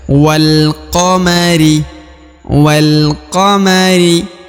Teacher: huruf wa langsung masuk ke huruf lam ya Alif ini tidak dibaca atau tidak dianggap